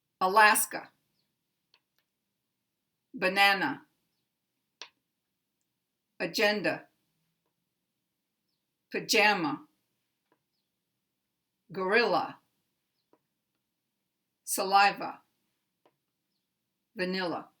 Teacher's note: these words contain weak, primary, weak.